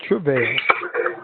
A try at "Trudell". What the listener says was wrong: Trudell. No, the D. Trudell.